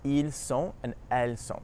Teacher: Notice that the S at the end is actually silent